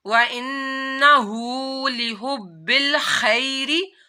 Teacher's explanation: با دو دفعہ پڑھا جائے گا، با کے اوپر تشدید ہے اس وجہ سے